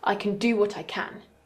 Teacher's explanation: the first can is in its weak form and the second one is stressed so it's in its strong form